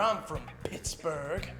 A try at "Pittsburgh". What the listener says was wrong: You know, there's no H at the end of Pittsburgh in Pittsburgh, Kansas, and I'm hearing an H from you.